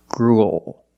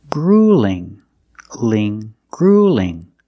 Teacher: the light L, you don't expand the bottom of the tongue. You don't raise the back of the tongue. You just make it straight.